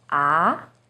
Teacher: second tone AR starts with a little lower pitch and goes up